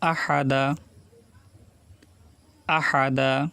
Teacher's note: হা গলার ভিতরে নিয়ে বলতে হবে চাপ দিয়ে।